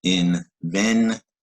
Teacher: Invention, 3-syllable word, stress on the syllable ven in the middle.